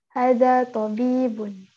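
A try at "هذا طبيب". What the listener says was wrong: Haknya panjang. Hadha. Hadha tabibun.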